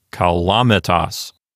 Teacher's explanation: There's nothing making it into a long syllable. So the accent goes over to the antepenult, which is the L-A syllable. So this word sounds like kalamitas. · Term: stress accent